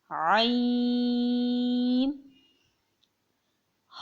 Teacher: عین کو بھی 5 الف کی مقدار کھینچ کے پڑھا جائے گا